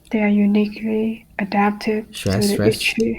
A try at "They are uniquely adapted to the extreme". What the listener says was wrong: Where's the stress here? Unique, okay? The second syllable. Stress stronger. Open your mouth bigger, a little bit bigger. You have a very common habit, like many other students, is that you're not willing to open your mouth big enough.